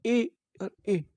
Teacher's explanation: कंठ और तालू दोनों से आवाज आ रही है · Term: कंठ तालो